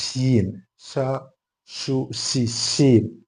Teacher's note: സു സീ എന്നൊക്കെ പറയുന്നു ഓക്കേ ഷീൻ ആണെങ്കിൽ ഷീനിന്റെ മഹറജ് എങ്ങനെന്ന് വെച്ചാൽ നാവിന്റെ മധ്യഭാഗം നാവിന്റെ സെൻറർ പോർഷൻ മേലെ അണ്ണാക്കിന്റെ ഭാഗത്തേക്ക് തട്ടിച്ച് കാറ്റ് പുറത്തേക്ക് വരുമ്പോഴാണ് ഷീൻ എന്ന് എന്ന അക്ഷരം ഉണ്ടാകുന്നത്